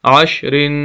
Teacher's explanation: یہاں پر بھی عین کو شین کے ساتھ ملائیں گے، کیونکہ عین شین جو ہے وہ ساکن ہے، اور آخر میں را ہے، تنوین ہے، غنہ کریں گے، ناک میں آواز جائے گی، عشرن۔ اگر ہم وقف کرنا چاہیں گے تو را کو ساکن کریں گے، اور جیسے ہی ساکن کریں گے اس کی 2 زیر ختم ہو جائیں گی، تو لفظ ہوگا عشر، عشر۔